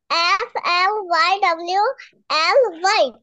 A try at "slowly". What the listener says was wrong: দাঁড়াও, এটা কোন দিক দিয়ে ওয়াই? এটা কি অক্ষর, কি অ্যালফাবেট? ও, এটাকে ও বলা হয়। SLOWLY, স্লোলি।